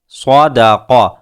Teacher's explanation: صاد لفظ پر ہے، اس کو پر کیجئے، قاف لفظ پر ہے